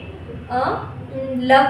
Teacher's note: साथ ही जो ल है इसे एक और नाम से पुकारा जाता है, उसका नाम है ल को पुकारा जाता है पार्श्विक व्यंजन। ल को बोला जाता है पार्श्विक व्यंजन।